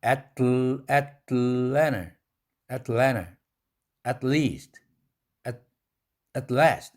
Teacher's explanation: 강한 강모음 앞에서 t는 강한 기음이 되는데 L 사운드가 있죠. 그렇다 하더라도 강하게는 나오는데 에스피레이션이 옆구리로 샌다.